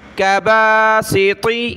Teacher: سین باریک اور طا کو ہم نے موٹا کرنا ہے